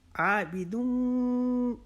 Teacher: انا عابدون، عابدون، اب یہ جو آب ہے، آ کو ہم نے 1 الف کی جتنا کھینچنا ہے، بی کو لمبا نہیں کرنا